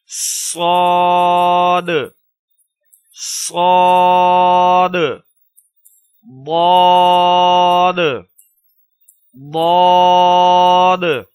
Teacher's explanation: صاد اور ضاد کو خوب پر کر کے موٹا کر کے ادا کریں گے۔ اسی طرح طا اور وا کو بھی موٹی آواز کے ساتھ ادا کریں گے۔